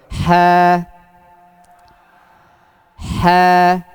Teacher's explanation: Ha. Nah, khasnya huruf ha itu juga ada hames. Hames itu nafas yang mengalir.